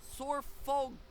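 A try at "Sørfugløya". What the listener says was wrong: The O like thing is like a U. So Surfugluya.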